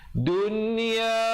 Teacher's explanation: Lamnya tidak dibunyikan, terus naik di atas dal yang bersabdu. Dunia, izhar mutlak, nunnya jelaskan saja tanpa dipanjangkan